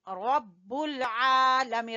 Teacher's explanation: रा को पुर पढ़ेंगे और आ को खींचेंगे मद्दा यानी खड़ी जबर की वजह से, खड़ी जबर और अलिफ मद्दा बराबर होते हैं, और मीन को भी या मद्दा की वजह से।